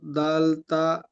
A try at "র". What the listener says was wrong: দাল না, র তো।